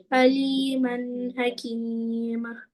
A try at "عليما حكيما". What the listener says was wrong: भाई दो जबर की जगह एक जबर पढ़ना है, अलीमन हकीमा रहीमा, ये